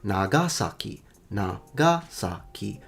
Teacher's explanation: The Japanese say Nagasaki, Nagasaki, so both sa and ki are definitely low. It's called the nakadaka pattern. · It's called the nakadaka pattern. It's one of those words that start low, go high, but do not stay high. They go low.